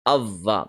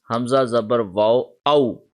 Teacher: So this will become aw. However, when there is a tashdeed on the letter waw, the sound will not be aw but av. So Hamza zabar waw av, waw zabar wa, avva. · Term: V sound